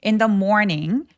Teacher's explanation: 울림이 있는 유성음의 th거든요. 그래서 그냥 a b c d에 d처럼 발음하셔도 됩니다.